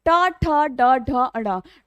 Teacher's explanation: ट वर् में जीभ उल्टी होकर तालु को स्पर्श कर रही है तो ट वर्ग के सभी व्यंजनों का उच्चारण स्थान मूर्धा या फिर मूर्धन्य होता है।